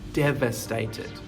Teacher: with the pronunciation of the V your teeth are on your bottom lip